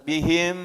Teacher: ditempel mulutnya antar bibir bawah bibir atas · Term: di dengungkan